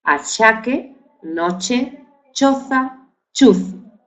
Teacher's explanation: Para que tenga sonido sería ch, ch. Entonces el dígrafo ch representa el fonema africado palatal, ch, palatal, ch, sordo, es decir, achaque, noche, choza, chuzo.